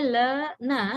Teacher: when you say la, na, you completely touch the alveolar ridge.